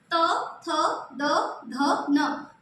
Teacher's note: आपकी जीभ बार-बार दांतों में टच हो रही है। तो इसीलिए इसको कहा जाएगा दंत